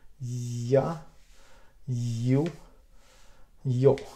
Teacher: We pull up the middle of the tongue and very close to the hot palate, and then we give the sound an air, and it will be ya, you, yo.